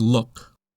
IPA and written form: lʊk (look)